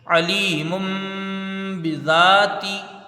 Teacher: عین کو جلدی پڑھا جائے گا، زبر ہے، لام یا ذلی، یہاں یا مدہ ہے، اس کو کھینچ کے پڑھیں گے، میم کے اوپر دو پیش کی تنوین ہے، تنوین کے بعد با ہے، یہاں تنوین کو میم سے بدل کر غنہ کے ساتھ پڑھیں گے. باقی نیچے زیر ہے، اس کو جلدی پڑھا جائے گا، زال میں الف مدہ ہے، اس کو کھینچ کے پڑھیں گے، تاکہ نیچے زیر ہے، اس کو جلدی پڑھیں گے، علیم بذاتی.